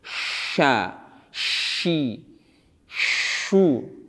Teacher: Karena makhrajnya bukan bibir yang dimonyongkan, tapi tengah lidah. Gunakan tengah lidah, fokus di tengah lidah yang diarahkan ke langit-langit dan menafaskan tengah lidah tersebut di area mulut. Sebarkan nafasnya di area mulut, tidak banyak keluar dari mulut. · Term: shin